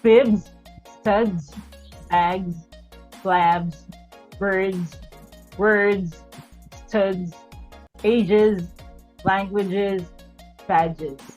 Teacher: Because we're talking about voiced consonant sounds, right? Since these are voiced. Therefore, S has a value of a Z because Z is also voiced. Technically, the mouth, the parts of the mouth used when speaking, it's easier for the parts of the mouth to glide from the voiced consonant and then together with a Z sound.